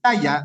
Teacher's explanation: el mayor acento la tiene en la penúltima sílaba, por lo tanto no es aguda.